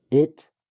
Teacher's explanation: I hear ta instead of t the second time